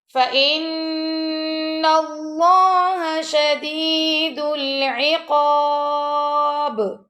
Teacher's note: نون مشدد آ گیا اور اللہ کے لام کو موٹا پڑھیں گے کہ اللہ کے لام سے پہلے زبر آ گئی